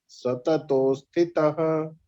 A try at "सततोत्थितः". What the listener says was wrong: तोस नहीं है, तोस नहीं, सततोत्थितः नहीं, सततोत्थितः पर ध्यान, पुरुषः को भूल जाइए आप। सततो सततो स्थितः हाँ तितः नहीं थितः।